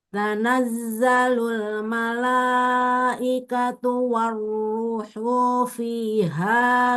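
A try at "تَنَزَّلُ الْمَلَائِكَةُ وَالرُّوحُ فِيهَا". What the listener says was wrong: Ru-nya kepanjangan. Warruhu fiha.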